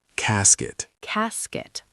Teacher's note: CAS-ket. Stress on the first syllable.